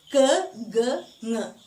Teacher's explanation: back of the tongue raising towards soft palate. So that's why it's called a velar consonants.